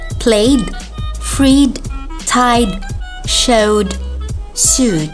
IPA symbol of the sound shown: d